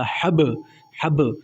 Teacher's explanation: یہاں پہ آپ نے قلقلہ کرنا ہے، لفظ کو موٹا دینا ہے، ہلکا سا جھٹکا محسوس ہونا چاہیے بس